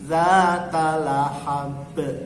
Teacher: Pada saat berhenti di huruf ba, ba-nya harus mantul. Jadi kalau dibaca sayasla naran dzata lahab, kalau tidak memantul salah. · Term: qalqalah